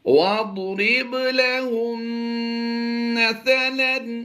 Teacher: ضاد کی ادائیگی ہم پور کریں گے اور با پر کلکلا کریں گے